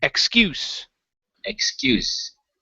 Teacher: the word excuse the stress is in the middle here